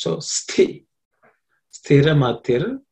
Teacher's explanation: Sthi, this, the is tha, the tha is second letter in the tha varga. So it has to be aspirated. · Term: aspirated consonant